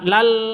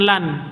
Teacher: Tanwin bertemu dengan lam, cara bacanya masuk ke lam, lal seperti itu, bukan lan tapi lal. Wa tafsilal seperti itu, di tanpa dengung, masuk ke lam tanpa dengung. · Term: idgham bila gunnah